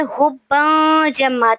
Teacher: تنوین کے بعد حروف اخفا میں سے جیم آ رہا ہے، تو یہاں پہ ہم نے جو ہے اخفا کرنا ہے، آواز کو تھوڑی دیر کے لیے ناک میں چھپانا ہے